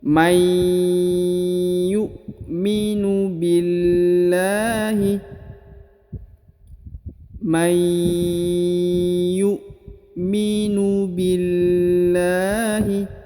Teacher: Di depan huruf bi ini terdapat alif ya. Tapi alifnya tidak dibaca karena huruf bi langsung masuk ke huruf lam yang pada lafzul jalalah · Maka cara bacanya tadi masuk dengan dengung, ditekan dan ditahan dua harokat ya. Lalu huruf nun sukunnya melebur dan menghilang ke huruf ya.